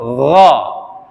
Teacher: menyertakan terangkatnya punggung lidah ke atas langit-langit sehingga yang muncul suara fathahnya itu antara a dan o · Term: isti'la